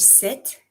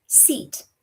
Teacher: In some languages that don't have that soft I sound, they replace it with an E sound. So you end up with things like instead of sit, you have seat.